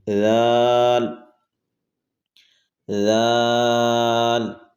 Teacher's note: دانتوں کو بند نہیں کریں گے، زبان کا کنارہ اور دانتوں کے اندرونی کنارے سے، اوپر کے دانتوں کے اندرونی کنارے سے نکلے۔ ذال، ذال۔ · سیٹی نکالیں گے تو زا ادا ہو جائے گا۔ ذال کو بغیر سیٹی کے نرمی کے ساتھ پڑھیں گے۔